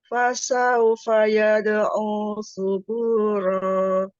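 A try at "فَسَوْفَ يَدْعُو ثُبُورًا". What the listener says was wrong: Masih tipis, Bu. Suburo, Ya, rok kan ujung lidahnya emang di langit atas, Bu. yang membuat dia tebal itu bukan ujung lidahnya, tetapi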